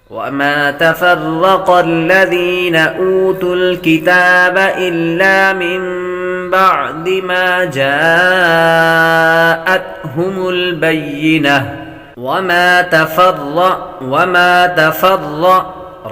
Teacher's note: را کو پر پڑھیں گے، را پر زبر تو را کو پر پڑھتے ہیں۔